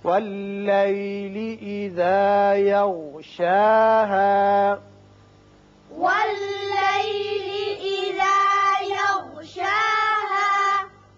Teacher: شا کے اور شین کے اوپر کھڑا زبر ہے، ہا کے اوپر زبر اور الف ہے، دونوں کی آواز مساوی طور پر اوپر کھینچیں گے